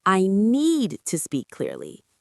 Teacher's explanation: The word need is the key word. So, we make it louder and longer.